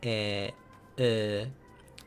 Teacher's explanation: you say e but then you round your lips as you're saying that. So e uh so that's how that is pronounced.